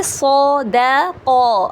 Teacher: صاد کو ہیوی کیا، دال کو لائٹ کیا